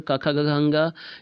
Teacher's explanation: तो का वर्ण का उच्चारण स्थान कंठ है।